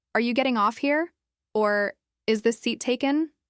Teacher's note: with a light upward movement in their voice at the end